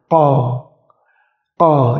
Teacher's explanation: pangkal atau lidah belakang kalian itu menyentuh langit-langit dan ditekan. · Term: huruf qaf